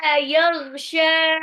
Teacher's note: Ingat waktu mengucapkan yaghsha, ghoy-nya agak ngorok